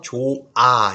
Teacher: 이때 여기에 모음으로 시작하는 어미나 전미사 뭐 예를 들면 좋아라고 하면 발음할 때 히읗이 없어서 좋아 이렇게 발음되죠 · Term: 히읗 탈락